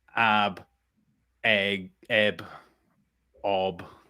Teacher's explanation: the glottal stop at the beginning so it basically means it starts with a vowel and then it ends with a b